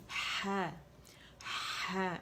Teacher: یعنی جڑ کے پاس سے آپ کو یہ سنائی دے گی. اس کا مخرج وسط الحلق ہے، جڑ نہیں ہے، لیکن جڑ نیچے کریں گے تو یہ موڑ سے بہت خوبصورتی سے نکلتی ہے اور ادا ہوتی ہے. · وسط الحلق سے جب یہ ادا ہوتی ہے تو فرکشن کے ساتھ آتی ہے